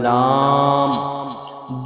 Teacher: জিবের আগার কিনারা এবং সামনে উপরে দুই পাশে দাঁতের গোড়ার সাথে লাগিয়ে উচ্চারিত হয়